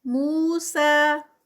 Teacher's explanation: مو پہ 2 کاؤنٹس، سا پہ 2 کاؤنٹس